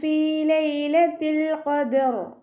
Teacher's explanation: ഹംസ പുറപ്പെടുന്നത് എവിടെ നിന്നാണ് അഖസൽ ഹൽക്കിൽ നിന്നും തൊണ്ടയുടെ ഏറ്റവും അവസാന ഭാഗത്തു നിന്ന്